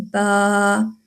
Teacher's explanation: با ہونٹوں سے ادا ہوتا ہے، حروف شفوی میں سے ہے، ہونٹوں سے ادا ہوتا ہے، اور دونوں ہونٹوں کے جو تر حصہ ہے اس کو ملانے سے با